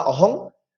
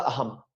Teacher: শব্দের শেষে বসলে আমাদের অনুসার উচ্চারণ ময় হসন্ত করতে হবে, অর্থাৎ ময়ের অর্ধেক করতে হবে